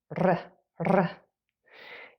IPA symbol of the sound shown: r